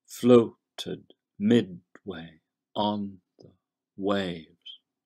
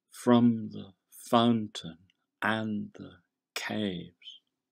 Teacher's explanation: In the other three lines, the meter actually changes gear from iambic to trochaic. That is, the pattern of unstressed stressed changes to stressed unstressed. "Floated midway on the waves." Notice how this leaves the last syllable, the line's masculine ending, stranded.